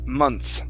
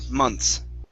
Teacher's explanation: we drop the th and um we pronounce it months like that months okay one